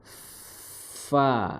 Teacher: makhrajnya adalah di ujung ya ujung gigi seri atas bertemu dengan bibir bawah fa disertai dengan suara apa disertai dengan ee mengalirnya nafas seperti itu.